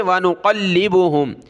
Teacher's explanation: लाम को सख्त किया तशदीद की वजह से